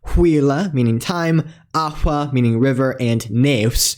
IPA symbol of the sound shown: hʷ